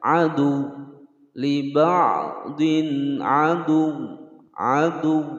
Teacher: Aduun atau adu, nah, bukan adu panjang atau aduun bukan, tapi dimatikan di huruf wawu sembari ditekan